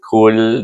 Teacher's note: Kahwa ku bertemu dengan huruf yang tasik, kahwa lam kul. Tak boleh baca ku, tapi baca kul di bawah mahraj kita kepada huruf lam.